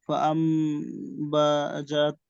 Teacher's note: নুন সাকিনের পর বা এসেছে, নুনকে মিম বানিয়েছি, আনের জায়গায় আম বলেছি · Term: মিম দ্বারা পরিবর্তন